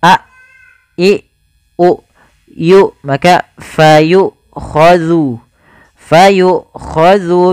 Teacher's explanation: ketika Hamzah itu mati maka tertahanlah dua-duanya nafas dan suaranya